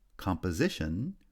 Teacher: composition receives secondary stress on the first syllable and primary stress on the third syllable